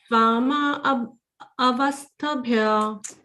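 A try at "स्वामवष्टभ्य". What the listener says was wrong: Swama you have told, na? Then only vashtabhya you have to say. Swama vashtabhya.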